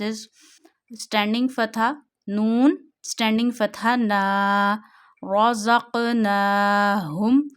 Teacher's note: Stretch na because of standing fatha up to one finger.